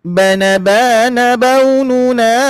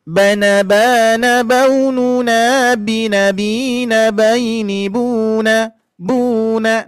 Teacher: Jadi irama yang kesatu itu ee datar, irama yang kedua itu turun.